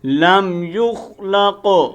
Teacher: یہ قاف کلکلے والا ہے، موٹا کرنا ہے، کلکلے کی آواز دینی ہے